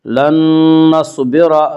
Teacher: صاد کو پر پڑھیں گے، صاد حروف مستعلیہ میں سے ہے۔ لن نصبر، را کو پر پڑھیں گے، را کے اوپر زبر ہے۔